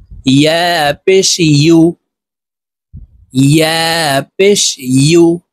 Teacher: প্রিয় দর্শক, উ বললে ইয়ার উচ্চারণ সঠিকভাবে হবে না, ইয়ার উচ্চারণ জিহ্বার মধ্যখান থেকে পড়তে হবে।